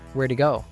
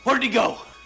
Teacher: In pronouns like he, her, and them, we often drop the first sound. Did reduced to just a d sound and links to he. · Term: connected speech